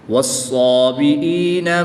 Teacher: صاد حرف مستعلیہ میں سے ہے تو اس کو پوری یعنی موٹا پڑھیں گے